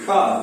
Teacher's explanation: ये शा इस प्रकार बोलते हैं, यानी मूर्धा को टच करता है, इसको मूर्धन्य सा बोलते हैं